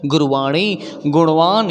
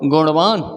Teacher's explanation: जब तक मूर्धा में टच नहीं करेगा इस ण का उच्चारण नहीं आ सकता है, इसलिए आपको कहाँ टच करवाना होगा, नाम से ही स्पष्ट है, मूर्धन्य ण।